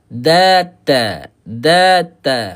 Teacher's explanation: Hujung lidah kita sentuh pada pangkal gigi kacip atas. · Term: makhraj yang sama